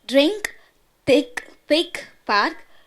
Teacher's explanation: K is a glottal stop in the end.